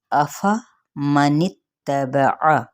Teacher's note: افمن اتبع، ان حرکات کو یعنی زبر کی تینوں حرکات ہیں، یعنی فتحہ کی تو لمبا نہیں کریں گے اور نون کی زیر کو تا کے ساتھ ملائیں گے، تا کی حرکت کو لمبا نہیں کریں گے، اور عین کو کیا کرنا ہے، وسط حلق سے ادا کرنا ہے، لیکن اس کی حرکت کو لمبا نہیں کریں گے۔